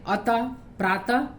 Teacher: विसर्ग का उच्चारण ह के समान होता है